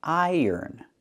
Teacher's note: We have the long I sound, plus the er like in burger. Er. Iron.